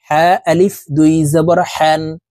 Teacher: এ হা হরফকে হলুকের মধ্যখান থেকে উচ্চারণ করতে হবে কারণ হার মাখরাজ হলুকের মধ্যখান থেকে হবে হা আলিফ দুই জবর